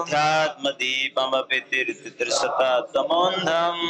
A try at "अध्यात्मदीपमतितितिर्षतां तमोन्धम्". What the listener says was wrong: मुझे पता है अति तितिर्षाम बोलने में दिक्कत हो रही। अति तितिर्षताम बोलिए। अध्यात्मदीपमतितितिर्षतां तमोन्धम् एक ती खा गए। अध्यात्मदीपमतितितिर्षतां तमोन्धम् अध्यात्मदीपमतितितिर्षतां तमोन्धम्